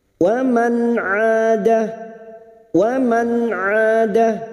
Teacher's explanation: Nun sukun bertemu ain, idhar halki dibaca jelas tanpa mendengung.